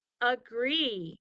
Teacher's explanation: It uses the banana rule for the A because it says the schwa sound